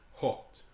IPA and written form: hɒt (hot)